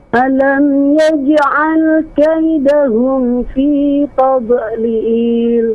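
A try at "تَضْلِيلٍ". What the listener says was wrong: Masih dipantulkan. Tade. Ini enggak ada tade. Jadi tadlil. Tadlil.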